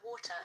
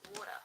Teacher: So the word water in RP, the T in the middle is clearly a T.